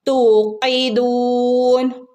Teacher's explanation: തൂ ന്റെ കൂടെ വാവ് മദ്ദു വന്നിട്ടുണ്ട്. അപ്പം നമ്മൾ എന്ത് ചെയ്യണം? അവിടെ 2 അനക്കം നീട്ടി കൊടുക്കുക കേട്ടോ.